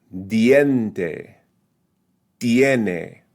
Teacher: So it is a vowel combination that's smushed together, forming a diphthong, same syllable pronunciation. But the first vowel is slightly weaker.